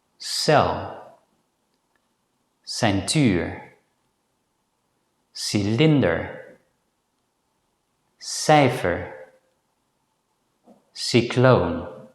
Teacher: The Dutch consonant S sounds somewhere between the English consonant S, as in the English word gas, and the English consonant sh, as in the word ash.